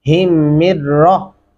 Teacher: ہم یہاں پہ اس جزم والے میم کو چھوڑ دیں گے کیونکہ اس سے اگلے میم کے اوپر شد ہے، تو لہٰذا اس ہا کو اس میم کے ساتھ ملاتے ہوئے پھر اس را کے ساتھ ملانا ہے کیونکہ اس کے اوپر شد ہے.